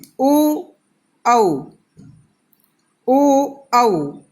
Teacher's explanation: उच्चारण करते समय कंठ और होठों की भी जैसे गोल ऐसे आकृति बनती है ओ औ, तो इनमें कंठ के साथ साथ होठों की भी जैसे सहायता होती है, तो इन्हें कंठोष्ठ्य वर्ण कहा जाता है।